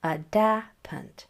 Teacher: So when you have a word like adapant, you'll notice that that first syllable and the last syllable were both unstressed. And it was that middle syllable that had the accent on it, adapant. That is because schwa is never in an accented syllable.